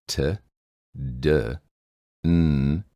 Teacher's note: sometimes the points of contact or points of articulation occur when the tip of your tongue touches directly behind the upper teeth a part of your mouth called the gum Ridge